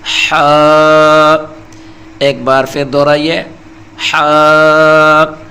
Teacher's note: اسے حلق کے درمیان والے حصے سے تھوڑا دبا کر بالکل صاف آواز سے نکالا جاتا ہے، جیسے گرمی میں بندہ سانس لیتا ہے۔